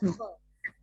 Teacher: Hanya ketika domah saja dimonyongkan bibirnya ya. Maka dia lidahnya yang terangkat, bukan bibirnya yang dimajukan. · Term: huruf yang tebal